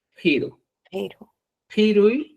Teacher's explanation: la Q no es una pronunciación simple, es una pronunciación friccionada, un poco aspirada y áspera